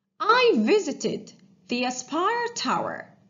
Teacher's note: The verb visited, the ed ending, sounds like it sound because the verb visit ends in t sound.